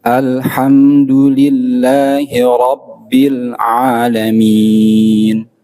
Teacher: Bil terus nyambung gitu, tidak terputus.